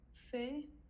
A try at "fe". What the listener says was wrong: If it's on its own, it's feu. when you have one consonant with E, then you pronounce the E, you say feu. Now, because that E is followed by two consonants that are not CR, CH, then CP, etc., then that E is pronounced like an A sound. So instead of feu, now it's becoming fait. It's just because it's followed by two consonants.